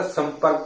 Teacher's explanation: पा वर्ग में आने पर अनुस्वार का जो उच्चारण होता है वो क्या होता है, माँ के तरीके से होता है